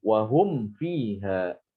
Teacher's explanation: Wahum fiha, harus didapatkan benar-benar mimnya itu didapatkan, ya, mimnya bibirnya dirapatkan, dan suara gunanya dikurangi ya, jangan ditahan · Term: idhar